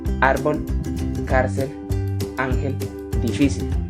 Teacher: Estas son las que llevan la intensidad de la voz en la penúltima sílaba. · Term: palabras graves